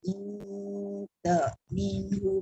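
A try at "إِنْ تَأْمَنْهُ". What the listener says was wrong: Ta'man. Bukan ta'min. In ta'man.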